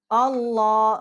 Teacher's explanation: اب حمزہ جو ہے اس کے اوپر الف ہے، اب لام جو ہے اللہ، ہم اس کو پر کر کے پڑھیں گے اللہ، اور اس کو بھی ہم ایک الف جتنا کھینچیں گے